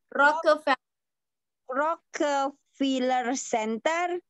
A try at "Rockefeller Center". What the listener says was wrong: Okay, bukan Filler tapi Feller. Rockefeller.